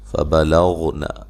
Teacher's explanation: غین کو موٹا ادا کرنا لیکن ہلانا نہیں ہے۔